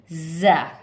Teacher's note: हमारी जो ज़बान की नोक है उसको नीचे वाले दांतों की जड़ पे टच करेंगे तो ज़ा की आवाज़ निकलेगी